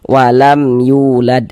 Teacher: Maka dibaca jelas bunyi mim sukunnya, kemudian tidak didengungkan. Maka dibaca pendek saja. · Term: idhar syafawi